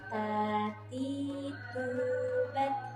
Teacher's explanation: Ta, ti tipis dan rahangnya ditarik. Tati, tu harus manyun karena huruf yang diharokati oleh doma, maka cara pengucapannya harus dengan manyun.